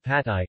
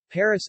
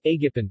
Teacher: P, voiceless, unaspirated bilabial plosive. Environment, syllable initial.